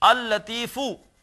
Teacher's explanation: مثال کے طور پر جیسے ہے لطیف، اللہ کا ایک نام ہے لطیفن، جب اس پر ال لگائیں گے تو یہ ہو جائے گا، دو لام لکھے جائیں گے، اللطیفو، پڑھا ایک ہی لام جائے گا، ادغام ہو جائے گا، لیکن لکھا جائے گا اللطیفو۔